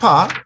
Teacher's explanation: So consonant pa, the paper moves. So we call this release of air aspiration.